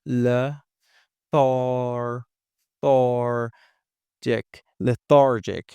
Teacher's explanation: the I is in an unstressed position again, so we can change it into a schwa